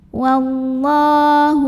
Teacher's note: lam syamsiah karena alif lam ketemu huruf Syamsiah yaitu Lam lagi maka cara bacanya alif lam tidak dibaca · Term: alif lam syamsiah